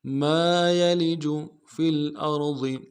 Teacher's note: فا کو لام کے ساتھ ملانا ہے، لام ساکن غنہ نہیں ہوگا